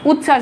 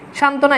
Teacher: যুক্ত ব্যঞ্জনের সঙ্গে বফালা থাকলে তা উচ্চারণ হয় না